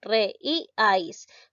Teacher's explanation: re, I, ais, la mayor fuerza de voz lleva en la sílaba I. Es una palabra grave. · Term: hiato